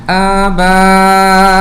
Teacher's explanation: Hamzah itu terletak di atas waw. Jadi dalam kalimah ini huruf alif berjumpa dengan hamzah dalam satu kalimah, dalam kalimah yang sama, maka hukumnya adalah mad wajib muttasil. Mad wajib muttasil perlu dibaca dengan kadar 4 harakat juga